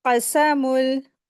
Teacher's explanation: क़ाफ़ को हलक से अदा करते हुए, और फिर सीन को सीटी की जैसी वॉइस निकालते हुए